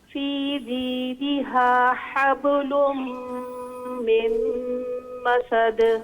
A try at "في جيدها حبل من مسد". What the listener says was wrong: ہاں با پہ آواز کو روکنا نہیں ہے، چھوڑنا ہے. حبل حب اس کو حبل ایسے نہیں. فی جیدها حبل من مسد.